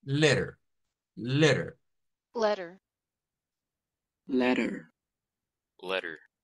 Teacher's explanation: la pronunciación estadounidense nos dice que la t no se dice se dice una r en sustitución de la t